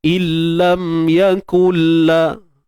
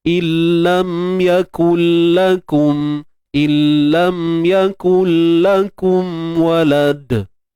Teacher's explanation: bunyi nun tu dah tak ada dah sebab dah masuk dalam lam dan tanpa dengung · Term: idgham bila gunnah